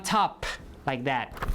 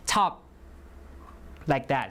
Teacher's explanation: you release the air but you can also not release the air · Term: unrelease